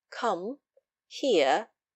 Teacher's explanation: The 丙声 even sound is an even tone, the voice being level, with a slight falling inflection, as when we say come, here in our imperatives